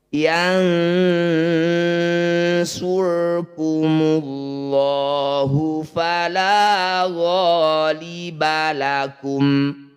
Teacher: Bunyi 'nun' diucapkan dengan sengau selama dua harakat. Saat mengucapkan huruf 'shad' melalui hidung, lidah kita sudah siap. · Kalau yang ini disebut bacaan ikhfa, namanya ikhfa awsat. Bunyi nun dengungkan 2 harokat. Ketika dengung lisan kita sudah bersiap di huruf shad. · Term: ikhfa aqrab